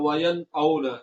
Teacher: نون کو بغیر کسی تبدیلی کے اس کے مخرج سے صحیح طریقے سے ادا کرنا ہے، اور یہاں پر ہم نے آواز کو ناک میں لے جا کر ادا نہیں کرنا